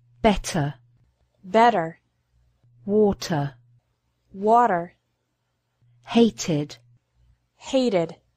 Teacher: Finally, the T sound in the middle of the word can be different in British and American English. In this situation, Americans often pronounce the letter T like a quick D sound